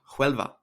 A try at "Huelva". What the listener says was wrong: Huelva. said Huelva with a H. There's no H.